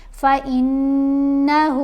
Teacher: آواز ناک میں جاتی ہے اور ایک الف کی مقدار جتنا ٹھہر کر اس کو پڑھا جاتا ہے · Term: غنہ